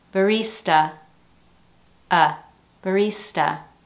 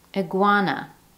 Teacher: use a schwa sound at the end